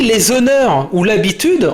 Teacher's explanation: on dit les honneurs ou l'habitude en faisant la liaison